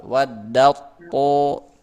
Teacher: Contoh ini ta ketemu to. Ta to sama-sama di ujung lidah bertemu dengan pangkal gigi seri atas, tapi beda sifat. Ta tipis, to tebal. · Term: Mutajanisain, idgham